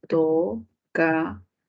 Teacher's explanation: última sílaba con mayor fuerza de voz. Uy, palabra aguda, tocador.